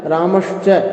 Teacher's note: रामस का जो दंत सकार है वह तालव्य शकार के अंदर बदल गया